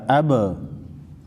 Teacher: حروف قلقلہ با حروف قلقلہ میں سے ہیں، با کو ہلا کر پڑھیں گے